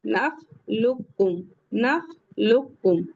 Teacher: तो यहां पे काफ को हटा देंगे और ये लाम को काफ में मिला देंगे